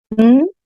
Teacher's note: an alveolar nasal voice sound